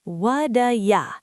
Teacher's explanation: But in what'ya, the T has become a soft D sound. We call this a flap.